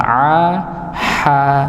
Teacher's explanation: Jadi ha dan a itu satu tempat yaitu tenggorokan bagian bagian tengah.